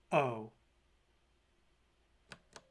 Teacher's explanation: there is one closed mid vowel that is a back vowel